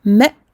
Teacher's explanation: Il n'y a pas de qalqala sur les hamza. Donc pour une hamza, je coupe le son, je referme d'un seul coup les cordes vocales. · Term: Hamza soukoun